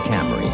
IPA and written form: ˈkæmri (Camry)